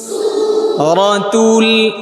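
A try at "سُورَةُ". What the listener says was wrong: আপনারটা তো হচ্ছে তু তু এমনটা না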